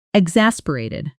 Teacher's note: Exasperated is stressed on the second syllable · Then at natural speed, exasperated, letting the middle syllable really pop.